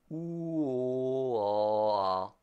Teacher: The back vowel in French are OO, O, A. Again, I said them OO, O, A when opening my mouth.